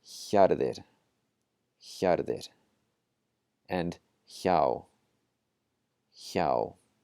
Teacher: the combination HJ makes the J voiceless. And what voiceless means is that our vocal folds are not vibrating while we say it. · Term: voiceless J